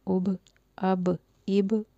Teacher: حمزہ زبر با ساکن اب، حمزہ زیر با ساکن اب، حمزہ پیش با ساکن اب، اب اب اب۔ با کو ہلا کے اس لیے پڑھیں گے کہ با پہ قلقلہ ہے